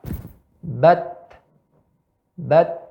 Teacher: suaranya samar. Udara keluar, tenggorokan tidak bergetar. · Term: huruf ta